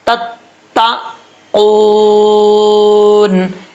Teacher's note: زبان کی نوک اوپر والے دانتوں کی جڑوں سے لگے تو تا پڑھا جاتا ہے · زبان کی جڑ اوپر والے تالو کے نرم حصے سے لگے تو قاف پڑھا جاتا ہے